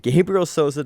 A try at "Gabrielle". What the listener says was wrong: I think it was Gabrielle. It's Gabrielle. It's not Gabriel. It's Gabrielle. That's how they were pronouncing it. Gabrielle.